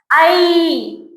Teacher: ஐன்னு சொல்லக்கூடாது. ஐ வந்து கொஞ்சம் அழுத்தி சொல்லணும் நெடில்